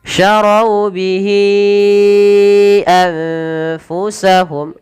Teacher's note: ada nun sukun bertemu fa, samarkan ke fa